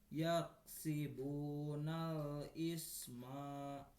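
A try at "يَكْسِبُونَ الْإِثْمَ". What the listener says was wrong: Jangan dipanjangin ada alif. Kan huruf akhir harus dimatikan.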